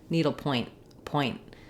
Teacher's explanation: So I'll stop the air to mark the T, but I won't let it out.